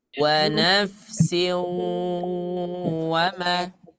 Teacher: Yang ada tanwinnya lah yang dibaca gunnah.